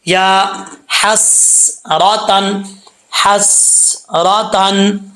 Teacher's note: اس ہا کا تعلق حلق سے ہے، سینے کی طرف نہیں ہے، اس کو باریک پڑھیں گے۔